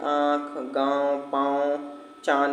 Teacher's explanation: इन उच्चारण में नाक और मुंह दोनों की आवाज निकलती है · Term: अनुनासिक